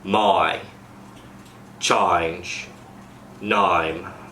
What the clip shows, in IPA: eɪ to aɪ